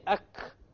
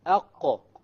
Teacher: So if you make a mistake and you say ak, which is a kaf, you know that your tongue is hitting the hard palate, which is a mistake. It's supposed to hit the soft palate.